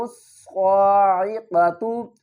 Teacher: صاد کو پر پڑھیں گے اور الف اور لام کو نہیں پڑھیں گے۔ میم کو ہم صاد کے ساتھ ملائیں گے، صاد کے اوپر تشدید ہے، سختی بھی کریں گے۔